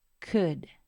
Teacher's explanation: la l no se pronuncia y la d se va a pronunciar de esta manera d